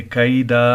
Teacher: یکیدون کیدا، 2 زبر ہے، جب ہم اس پر وقف کریں گے تو ایک زبر پڑا جائے گا، ٹھیک ہے. کیدا اور ایک زبر کو ایک الف کے برابر کھینچیں گے